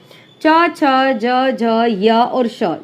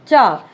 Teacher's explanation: उच्चारण करते समय जीवा अग्र कठोर तालु को स्पर्श करता है। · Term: तालव्य व्यंजन